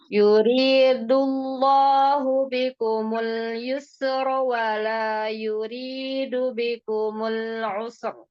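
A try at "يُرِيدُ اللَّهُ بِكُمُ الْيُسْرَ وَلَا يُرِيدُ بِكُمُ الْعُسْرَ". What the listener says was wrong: Sinnya jangan ada tawalut. Jangan memantul ya, kan bukan huruf qalqalah ya. Yuridullahu bikumul yusra wala yurid. Yusra ya. Usr. Usr. Usr. Kalau mau wakaf. Wala yuridu. Nah, jadinya wakaf di dua huruf yang bersukun ya. Namanya wakaf sohih ya.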